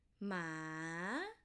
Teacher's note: it starts from low and end with high. So it should be a rising tone